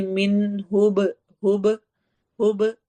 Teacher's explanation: با کے اوپر جزم آ رہی ہے، اس میں ایکو ساؤنڈ ہوگی، قلقلہ ہوگا